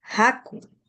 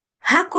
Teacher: el ja es un sonido velar. Se produce uniendo, ¿no? O acercando el postdorso de la lengua al velo del paladar.